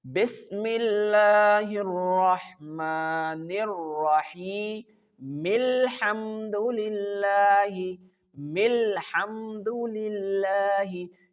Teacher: the last word and the last letter, which is meme, make the connection with the first letter of the next word and the next verse, which is lam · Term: joining point